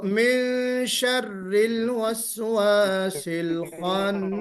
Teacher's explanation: نون کے ساؤنڈ کو آپ یہاں ناک میں چھپا کر نکالتے ہیں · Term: اخفاء